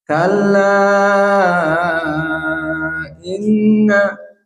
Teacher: majaiz munfasil dibaca dalam keadaan 6 harokat